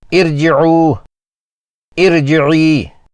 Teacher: ساکن را سے پہلے عارضی زیر ہو تو وہاں را کو موٹا پڑھا جائے گا